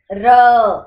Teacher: र में देखो आपकी जीभ तीन से चार बार कंपन करती है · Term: प्रकंपी व्यंजन